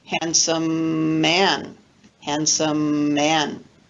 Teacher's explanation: we just lengthen the identical consonant when we pronounce it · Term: linking